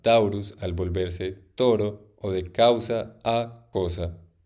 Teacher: el diptongo latino au, compuesto por una vocal baja y una alta, resultó en el fonema o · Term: asimilación mutua o recíproca